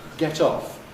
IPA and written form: ˈget ˈɒf (get off)